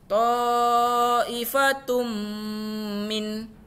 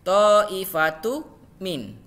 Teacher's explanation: tanda dhammatoin bertemu dengan huruf mim, yaitu tun dengan mim, sehingga hukum bacaannya idgham bigunnah, berdengung. Sehingga ketika dibaca yaitu ta'ifatum min, tidak boleh ta'ifatu min, tapi ta'ifatum min, sehingga dibaca idgham bigunnah.